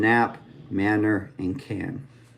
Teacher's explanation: this is actually the alveer nasal where we use our vocal cords